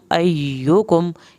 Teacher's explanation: या को नरमी से पढ़ना है, या की शद अदा करनी है, लेकिन यहाँ पे सख्ती नहीं दिखानी